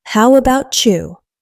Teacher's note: The T in about often disappears in about you. It becomes about you. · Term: American English reduction